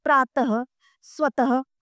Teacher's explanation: ह की ध्वनि का उच्चारण किया जाता है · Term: विसर्ग